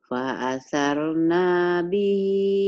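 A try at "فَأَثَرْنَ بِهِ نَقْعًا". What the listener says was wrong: pendek. Fa'asarna bihi naq'a. Nggak ada yang panjang.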